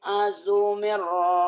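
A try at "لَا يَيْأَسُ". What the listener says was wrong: Asu. Jangan azu, asu, es. Saya suka susu sapi es. La yai asu.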